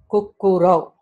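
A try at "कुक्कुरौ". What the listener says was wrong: Very good.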